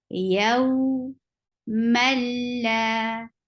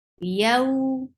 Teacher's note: You're merging the sound of tanween into lam and without making gunna. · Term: idgham without gunna